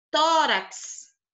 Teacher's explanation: Tá aqui o tó, é a mais forte. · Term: sílaba tônica